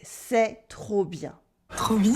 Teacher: we also use trop for too much with the silent P to mean très for very.